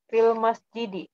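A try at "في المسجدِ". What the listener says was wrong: Ahsanti, fil masjidi.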